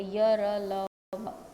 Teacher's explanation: इनका उच्चारण जीभ, तालु, दांत और होठों के निकट आने से होता है, किंतु श्वास में रुकावट कम होती है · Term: अंतस्थ व्यंजन